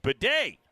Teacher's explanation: Emphasis on the second syllable.